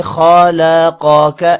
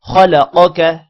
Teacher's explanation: خوا بھی موٹا ہوگا اور قوف بھی موٹا ہوگا